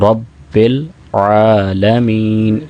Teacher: لام کے بعد عین ہے اور عین کو 2 سیکنڈ کے لیے لمبا کرنا ہے، کھڑی زبر ہے، رب العالمین۔